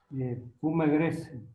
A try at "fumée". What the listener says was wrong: Ah, de la fumée grise, De la fumée. Ah, ici se pronuncia la E. ¿Por qué? Il y a l'accent donc on va prononcer la E. Accent aigu, très bien.